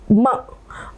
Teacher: ये म का उच्चारण ओठ भी जो है म, और साथ साथ में थोड़ा सा नासिका